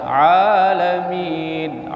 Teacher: Ain di tengah tenggorokan